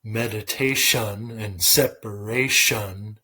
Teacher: rhyming is often about where you stress the syllable for example in meditation and separation you stress the first and last syllables while the two inner syllables are quieter